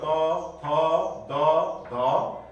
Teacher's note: जिब्राको टुप्पा र माथिल्लो दाँतको फेदमा यी दुई अवयवहरू स्पर्श भएर त वर्गको उच्चारण हुन्छ।